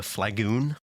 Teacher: The second syllable in flagon like was kind of elongated into flagoon